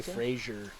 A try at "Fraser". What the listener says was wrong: There's no I in it. There's no I. It's ER.